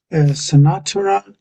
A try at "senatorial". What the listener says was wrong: this one here, you've gone back to your first pronunciation. So every time you've read it out, in a Monday as well, you've said this sonatas. You say sonatas, but we just don't say it that way. In English, it comes out as senators. Senators. Senators.